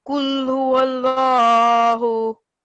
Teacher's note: Where there's Allah's name and there is a sign on top of a letter before. So then this Allah will be pronounced in a thick way